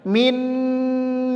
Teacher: ya ada tasdid di huruf idghamnya begitu juga di sini maka cara membacanya adalah ditahan didengungkan dua harakat · Maka cara membacanya adalah ditahan, didengungkan 2 harokat, yaitu bunyinya min ni'matin.